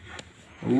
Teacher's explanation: वा का उच्चारण स्थान दंतोष्ठ माने दांत और ओंठों से होता है, दंतोष्ठ है।